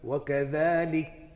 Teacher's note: You make the hams wadih by a little release of air, and then the letter kaf and ta become apparent.